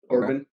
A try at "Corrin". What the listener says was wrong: No, it's Corrin. There's no B.